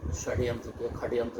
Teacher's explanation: तो वो मूर्धन्य स के ख हो जाए छै